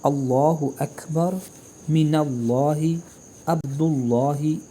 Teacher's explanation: لام تفخیم کی مثال اللہ اکبر، من اللہ، عبد اللہ، یہاں سب جگہ الف اللہ کا لام تفخیم سے ادا کریں گے کیونکہ اس لام سے قبل زبر یا پیش ہے